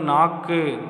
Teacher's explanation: சொல்லுக்கு இறுதியில வல்லின மெய்கள் ஏறிய உகரம் தன் ஒரு மாத்திரை அளவிலிருந்து அரை மாத்திரை அளவாக குறைந்து ஒலிக்கும் இவ்வாறு குறைந்து ஒலிக்கும் அமைப்பிற்கு குற்றியல் உகரம் என்று பெயர் சொல்லின் இறுதியில் இருக்கும்